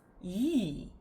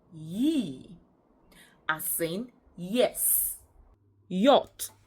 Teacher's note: This sound is a palatal approximant voiced sound. It is articulated as ye, not g.